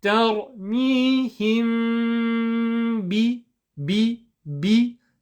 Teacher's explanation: Now, just to explain how we actually implement the meme sukun ikhfa rule, is that if there's a letter ba after a meme sukun, what you will do is you'll gently touch your lips together and you'll make a noise in the nose, okay, a light nasal sound